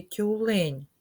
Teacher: у слові тюлень звук ть М'який приголосний і Він знаходиться на початку слова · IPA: [Т’]